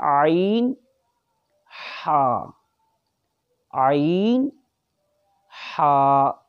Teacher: درمیانی حلق سے، ان کو کہتے ہیں عین ہا، عین ہا، یہ درمیان سے ادا ہوتے ہیں